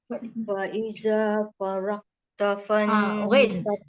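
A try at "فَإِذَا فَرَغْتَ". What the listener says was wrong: Ghain ni sifat dia apa? Rakhawah, sebab dia warna merah. Nanti kena terlepas suara, dia ada bunyi. Jangan farak. Kalau farak kita berhenti dengan syiddah, terkejut. Lepaskan suara, jangan sampai pergi ke lantunan. Jangan farag.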